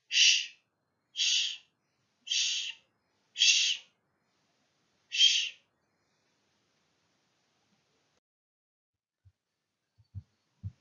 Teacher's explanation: the middle of the tongue is pressed against the palate, and the teeth should be closed, and the lips should be open. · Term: sh sound